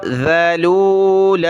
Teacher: ذال پر زبان نکالیں اس کو زا نہ پڑھیں